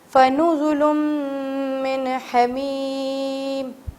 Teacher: من کو میں نے واضح کیا چھپایا نہیں کیونکہ یہاں پر چھپانے والی چیز ہی نہیں تھی، کیونکہ یہاں پر حروف حلقی نظر آ رہا ہے.